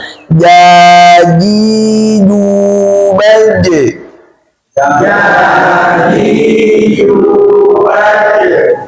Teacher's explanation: Ja pakai tengah lidah. Jangan ada udara keluar.